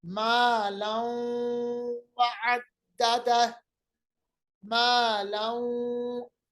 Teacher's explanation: इदगाम का मतलब मिलाना, गुन्ना भी हो रहा है, नाक के बांसे में आवाज हम रख रहे हैं, तो पढ़ेंगे मालौं वअद्ददह, मालौं, इदगाम बागुन्ना, इदगाम गुन्ने के साथ, ये नून का कायदा है।